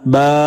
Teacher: തൊണ്ടയുടെയും വായയുടെയും ഒഴിഞ്ഞ ഭാഗമാണ് ജൗഫ് മദ്ദക്ഷരങ്ങളായ അലിഫ് വാവ് യ എന്നിവയാണ് ജൗഫിൽ നിന്നും പുറപ്പെടുന്നത്